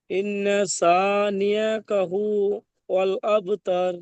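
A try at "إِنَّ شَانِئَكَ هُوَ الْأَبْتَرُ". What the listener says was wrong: আপনার শিনটা সিনের মতো উচ্চারণ হয়ে যাচ্ছে, বিনা নোক্তাওয়ালা সিন উচ্চারণ হচ্ছে, ওটা নোক্তাওয়ালা শিন উচ্চারণ করবেন।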